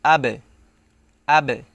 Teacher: বা হচ্ছে কলকলাহর হরফ এজন্য এখানে একটু বাড়ি খাবে বলার সময়